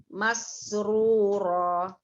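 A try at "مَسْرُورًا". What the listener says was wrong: Mas, kerunya nggak boleh mase. Nah, tapi sekarang disambung. Masruro. Jadi maksudnya agak maseru. Nah, ada mase, ada e-nya. Itu yang nggak boleh. Dihilangkan ya.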